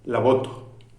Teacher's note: Mis labios no se cierran, mis labios se acercan. Esto es un sonido bilabial, siguen siendo los dos labios, aproximante, pero no es un sonido fricativo.